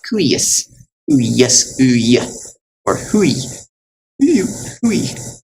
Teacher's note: it sounds like a short U and then a long I